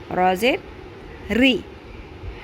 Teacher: را کے نیچے زیر ہے، باریک کرنا ہے